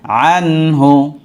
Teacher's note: আনহু গুন্না করা যাবে না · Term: এজহার